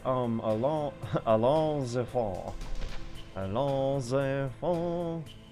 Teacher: the S from allons is usually silent, but since the word after it, enfant, is a vowel, they are joined. The term is liaison.